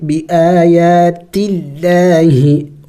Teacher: یہاں پہ لفظ اللہ سے پہلے زیر ہے تو لفظ اللہ کو ہم باریک پڑھیں گے